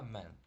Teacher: буква А зажата між двома приголосними, тому вона читається не як а, а як більше як е